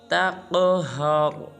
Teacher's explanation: تا کو ایک الف مقدار لمبا کرنا ہے، جیسے یتیمہ فَلَا تَقْہَرْ۔ قاف کو پر بھی ادا کرنا ہے اور قاف کو قلقلہ بھی کرنا ہے، یعنی کہ ہلانا ہے، اور آخر میں را کو پر ادا کرنا ہے، جیسے تَقْہَرْ۔